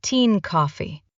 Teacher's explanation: And often becomes something like un or even a simple n sound. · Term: weak forms